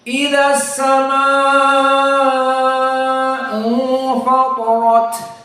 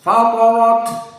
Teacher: ta dan ra dalam keadaan tafkhim dan ta dalam keadaan al-hams dan ma dalam keadaan al-isba.